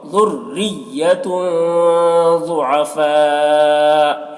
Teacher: ذُرِّيَّةٌ را کو بھی باریک پڑھیں گے، ذُرِّيَّةٌ یہاں پر دیکھیں تنوین کے بعد حروف اخفا میں سے ضاد ہے تو اخفا ہوگا